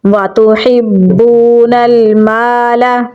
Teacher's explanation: ہا کو گلے کے درمیان والے حصے سے نکالیں گے اور با کے ساتھ ملائیں گے کیونکہ با کے اوپر تشدید ہے۔ با کو واو کے ساتھ ملائیں گے کیونکہ واو کے اوپر جزم ہے۔ · نون کو لام کے ساتھ ملائیں گے کیونکہ لام کے اوپر بھی جزم ہے۔ میم کو لمبا پڑھیں گے کیونکہ اس کے آگے الف مدہ ہے